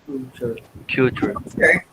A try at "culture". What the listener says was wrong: Culture. It's not Q. Okay, guys, don't mix it up. It's not Q. No, it's K. Culture.